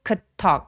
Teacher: D는 디귿 받침 정도로 소리 내 보세요.